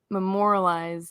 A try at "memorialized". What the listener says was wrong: Memorial. You left out a syllable, but it was close enough.